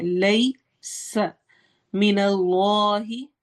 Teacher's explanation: اس میں جلالہ کے لام کو ہم موٹا پڑھیں گے